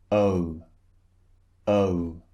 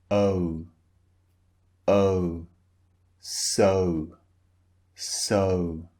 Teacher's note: shape of the mouth changes when you utter the sound so first the mouth is relaxed and then it's rounded notice the shape of my mouth oh so it starts relaxed